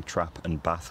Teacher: thing would be a lack of a trap bath split so pronouncing trap and bath with the same vowel